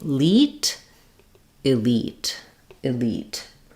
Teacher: So your first sound is I, short. Your second syllable has the E sound. That should be long.